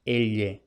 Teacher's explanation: la aproximante lateral palatal de forma más exacta